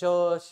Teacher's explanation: ज्या व्यंजनाचा उच्चार करताना मुखावाटे हवेचे घर्षण निर्माण होते. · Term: घर्षक व्यंजन